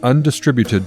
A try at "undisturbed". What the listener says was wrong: Undisturbed? You said distributed.